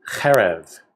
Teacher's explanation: it has an accent on the first syllable and it's a two syllable word